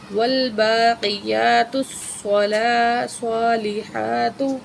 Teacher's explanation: با کھڑی زبر با، ایک الف کے برابر کھینچیں گے